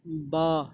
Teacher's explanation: तो दोस्तों बा बोला जाता है दोनों जो हमारे होंठ हैं, तो हमारे होंठ का जो गीला वाला हिस्सा है जो मुंह के अंदर की तरफ है, उन दोनों को मिलाने से जो है बा बोला जाता है